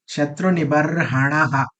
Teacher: ये आ के बाद विसर्गा है, इसलिए हम क्या बोलेंगे? इसको आहा बोलेंगे.